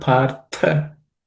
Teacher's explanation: The word partha, the tha, the last letter is aspirated or mahaprana, so it has to be stated with some extra air, which is it's the second letter in the tha class of consonants.